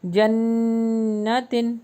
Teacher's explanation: یہاں پر نون مشدد آ گیا تو غنہ ہو رہا ہے ناک میں لے جا کر